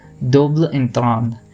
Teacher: has a very different sort of pronunciation here ends nasalized and the final syllable is barely audible